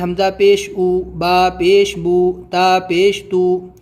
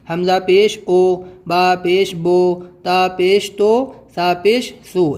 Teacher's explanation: پیش کو بھی معروف پڑھا جائے اور مجہول آواز سے بچا جائے، تھوڑا بھی نہ کھینچیں۔ پیش کی آواز آگے کو جاتی ہے اور ہونٹوں کے کنارے ملتے ہیں اور بیچ کا کچھ حصہ کھلا رہتا ہے۔